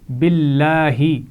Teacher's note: باللہ لام جلالہ سے پہلے زیر ہے تو اس کو باریک پڑھا جائے گا